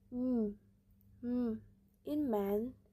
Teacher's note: the lips is closed and the air goes through the nose.